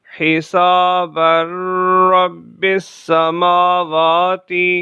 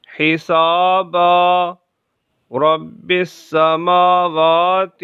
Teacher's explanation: وقف کی صورت میں را میں ادغام نہیں ہوگا